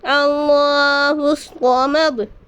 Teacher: صاد کو پر پڑھیں گے کیونکہ صاد حروف مستعلیہ میں سے ہے